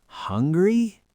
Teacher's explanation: The pitch slides up. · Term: rising intonation